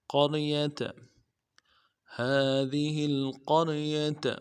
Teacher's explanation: قوف کو موٹا کرنا ہے، قوف کو را کے ساتھ ملائیں گے، را کو موٹا پڑھیں گے، یا کو نرمی سے ادا کریں گے، تا کو بھی نرمی سے ادا کریں گے۔